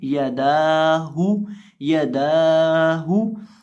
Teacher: अब यहाँ इस लफ्ज़ के अंदर हम दाल को खींच के पढ़ेंगे, दाल को लंबा करके पढ़ेंगे, और एक अलिफ के बराबर लंबा करेंगे, क्योंकि इसके ऊपर खड़ी ज़बर है। और इसी तरह हा को पढ़ते वक्त हम होंठों को गोल करके पढ़ेंगे, क्योंकि हा के ऊपर पेश है